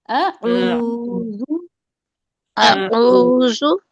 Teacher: دیکھیے ہم جب اعوذ پڑھتے ہیں نا تو ہم آ کو نہیں کھینچنا ہے، ہمیں آ کو بالکل نہیں کھینچنا ہے